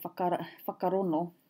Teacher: Tūhoi, they drop the G.